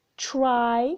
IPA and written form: traɪ (try)